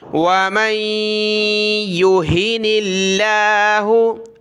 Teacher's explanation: لفظ اللہ سے پہلے نون پر زیر ہے تو لفظ اللہ کو باریک پڑھیں گے